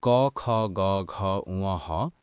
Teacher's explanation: কণ্ঠ বা জিহ্বার মূল থেকে উচ্চারিত হয়